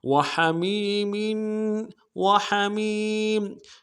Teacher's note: میم کو یا کے ساتھ ملانا ہے، یا مدہ ایک امداد میں کھینچیں گے ، اگلے میم کے نیچے تنوین ہے، غنہ کریں گے، وحمیم،